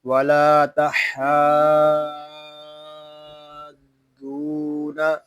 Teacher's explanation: ہا جو ہے یہ حلق کے درمیان والے حصے سے ادا ہوگا، اس کو ہا نہیں پڑھیں گے، اس کو پڑھیں گے ولا تحاضون.